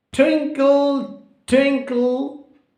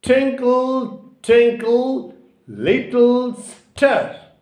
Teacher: So I am giving stress on the first syllable.